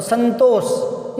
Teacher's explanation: ये तय से आता है ना, तय, ये दंत है, तो दंत से आएगा, तो संतोष। इसको यूं नहीं कह सकते संतोष, संगतोष, अंग अंग नहीं आ सकता।